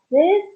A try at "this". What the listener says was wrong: This. This. Not these, but this.